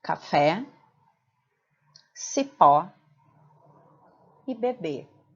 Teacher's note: em todas essas palavras a sílaba tônica é a última, portanto, cada palavra é classificada como oxítona.